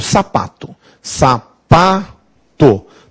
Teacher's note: sapato tem acentuação tônica é no pa pa é a sílaba mais forte